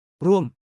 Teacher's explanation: ไ ม ้ เ อ ก Imagine the tone dropping down like a ball rolling downhill. Ruam, start high, drop low. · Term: falling tone